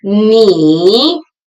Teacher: Ni, ni is pronounced with the third tone, low and then rising.